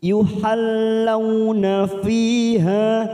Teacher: fi kasrah bertemu ya sukun 2 harokat, ha fathah diikuti alif 2 harokat · Fi kasr bertemu Ya Sukun dua harakat